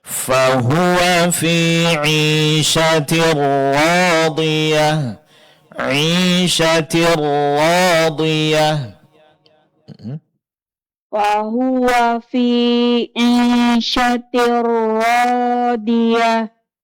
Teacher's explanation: tasydidnya lebih jelaskan dan ra-nya lebih tebalkan